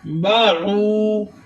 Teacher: او پہ آپ دیکھ رہے ہیں کہ واو ساکن اس سے پہلے پیش، تو ادھر واو مدہ ہو رہا ہے، ایک الف کی مقدار کھینچ کر پڑھیں گے اور آئین کی آواز سینے کے درمیانے حصے سے ادا کریں گے